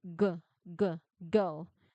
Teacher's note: There are vibrations, so this is voiced.